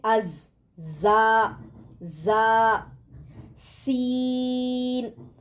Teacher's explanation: زا زبان کی نوک کو نیچے اور اوپر کے سامنے والے 2 دانتوں کے کنارے کے ساتھ لگانے سے نکلتا ہے